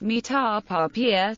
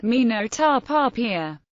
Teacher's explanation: The particle of negation, no, always receives rising tone. The following verb is inevitably raised in pitch. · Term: negating pitch raise